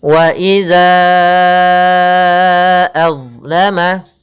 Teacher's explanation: Maka kita panjangkan pada lafal za itu sepanjang 4 harakat untuk mad jaiz munfasilnya.